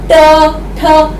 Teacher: जब आप बोलते हैं ट, ठ, तो आपकी ये जीभ मुड़ जाती है हल्की सी। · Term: मूर्धा